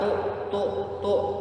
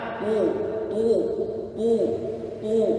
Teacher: Kalau huruf ta, tu, tu, biasa aja, ringan. Ya, kalau huruf to tebal, tu.